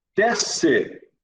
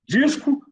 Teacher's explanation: Eu não ouço o S quando eu pronuncio.